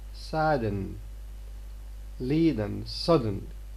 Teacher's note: the air pressure built behind the stop closure is released through the nose by the lowering of the vellum so we say so the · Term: nasal release